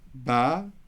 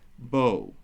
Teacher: in Eastern where we go ba, Western pronounces the same configuration as bo